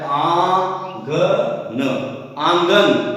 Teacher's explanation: जब हम मुंह से इस शब्द को बोलते हैं तो हमें नाक से भी वायु हमें निकालनी होती है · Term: अनुनासिक